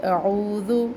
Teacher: حمزہ اقصی حلق سے اور عین وسط حلق سے، تو دونوں کی آوازوں کا واضح کرے، دونوں کی آوازوں کو واضح کرے. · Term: حمزہ اور عین